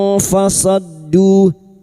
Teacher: huruf shad masuk ke huruf dal yang bertasdid